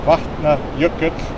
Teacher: which has the breath of air before the T, and then the TL is LL.